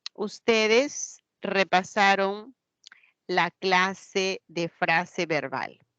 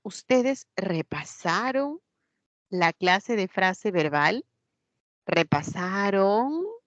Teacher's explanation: con eso estamos formulando una pregunta y la inflexión es ascendente